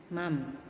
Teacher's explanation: Yang diganti itu nun sukun atau tanwinnya diganti dengan suara mim. Mam. Tadinya man kan man.